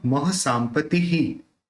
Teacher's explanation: ये जो विसर्ग है उसका भी ही प्रोनाउंस होगा